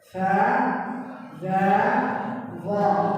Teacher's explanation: 3 huruf di dalam Al-Quran Karim harus ujung lidah keluar sedikit